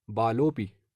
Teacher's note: यहाँ पर भी विसर्ग से पहले अस्वर है, बाद में भी अस्वर है तो विसर्ग को ओ हो जाएगा और बाद वाले अ को पूर्व रूप हो जाएगा